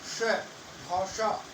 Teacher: श, भाषा, ये मूर्धा से बोली जा रही है। ये जगह है बोलते वक्त जीभ मुड़ करके तालु से पीछे वाले भाग जहाँ पर समतल जगह आ जाती है और मुख के अंदर थोड़ा गहरा गड्ढा सा है, वहां से ये बोले जाते हैं और वह जगह कहलाती है मूर्धा। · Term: मूर्धन्य श